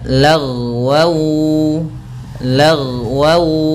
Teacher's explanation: lafal ghain ketika dia sukun jangan sampai memantul, karena huruf ghain tidak ada sifat qalqalahnya